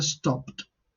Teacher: estas consonantes pierden sonoridad y la D concretamente se parece a la T. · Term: pérdida parcial de sonoridad